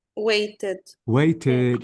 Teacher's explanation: notice I pronounce the E plus the D why because the verb ends with t so this is the first rule please keep it in your